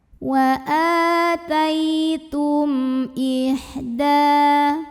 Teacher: mim sukun dibunyikan dengan izhar, jelas bunyi M-nya, tidak ditahan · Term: izhar syafawi